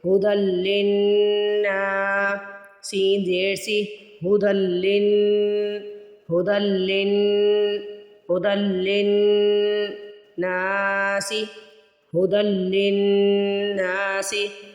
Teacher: لن پہ میں دیر لگا رہی ہوں گنہ کی وجہ سے